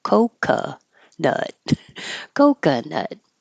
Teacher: the first o is the O cuz it's stressed and the second o is an uh because it's not stressed so it's not Coco nut it's COC nut coca nut it's